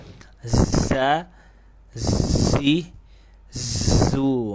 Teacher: Bedanya kalau za itu dia ada suaranya. Nah, itu nggak boleh hilang tuh suaranya, harus stabil. · Jadi ada suaranya, yaitu yang membedakan dengan huruf sin. Sin itu hamas, za itu jahar. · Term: huruf zai